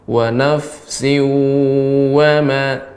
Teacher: Ketika mengucapkan wa itu benar-benar terdengar monyong suaranya. Ketika monyong maka pengucapan waw itu lebih sempurna.